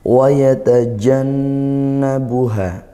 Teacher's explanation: makhraj huruf jim ini dari ee tengah lidah. Jangan sampai kita ketika melafalkan huruf jim dia ee kurang penekanannya karena dia punya sifat syiddah juga sehingga seperti huruf ya karena makhrajnya sama ya. · Nah, jadi huruf jim, kita melafalkan huruf jim, yaitu makhraj huruf jim ini dari tengah lidah